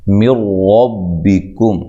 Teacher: نون ساکن کا را کے اندر ادغام ہو رہا ہے اور یہ ادغام بلا غنہ ہے ، ادھر غنہ نہیں کرنا، ربکم، را کو موٹا ادا کرنا